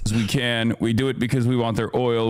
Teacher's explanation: Listen to the vocal fry in this clip, guys.